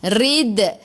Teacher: Rid kena melantun qalqalah sughra, lantunannya kecil.